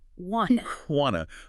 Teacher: The T at the end of want often gets dropped entirely before the T in to, and the vowel sound in to weakens, becomes unstressed. It's not a clear U sound, more like a schwa.